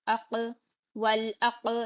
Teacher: قاف پر جزم قلقلہ بھی ہو رہا